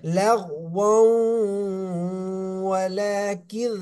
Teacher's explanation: লাগ, লাম গাইন জবর, লাগ ওয়াও, তানবিন আছে, তানবিনের পরে একদমে বা গুন্নার হরফ ওয়াও এসেছে, মিলানোর সাথে সাথে গুন্না হবে। লাগ ওয়াও, ওয়াও ওয়াও দুই জবর, ওয়াও নাকে চলে যাবে।